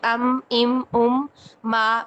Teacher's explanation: उसकी जो आवाज है वो नाक से हो के निकलती है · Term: गुना